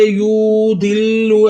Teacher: दी को बगैर खींचे पढ़ेंगे हम, मगर लाम मुशद्दद है। मुशद्दद हरफ 2 दफ़ा पढ़ा जाता है, एक दफ़ा अपनी हरकत अपने से पहले मुतहर्रिक हरफ के साथ मिलाकर, एक दफ़ा अपनी हरकत के मुताबिक पढ़ा जाएगा।